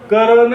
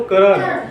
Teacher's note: म्हणजे क ला सुद्धा अ आहे आणि र ला सुद्धा अ आहे, पण न ला अ नाही.